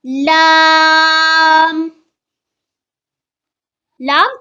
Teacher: tongue touches the front roof of the mouth